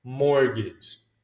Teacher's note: So, the T is silent.